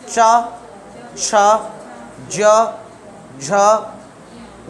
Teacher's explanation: तो चा वर्ग में हमारी जीभ जो है वो तालु से टकरानी चाहिए। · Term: तालव्य